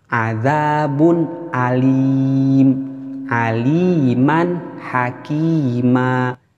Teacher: hukum bacaannya menjadi jelas tidak disamarkan tidak didengungkan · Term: Izhar